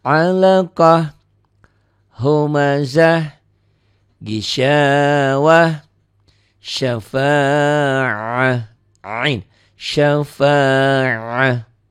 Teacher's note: Dihentikan tak marbutoh apapun barisnya tetap jadi ha.